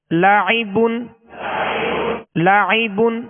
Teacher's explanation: عین میں حمزہ کی آواز پیدا نہ ہو